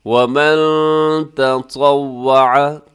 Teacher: نون ساکن کے بعد تا ہے، تو تا حروف اخفا میں ہے، آپ آواز کو ناک میں لے جائیے گا یہاں نون ساکن کی۔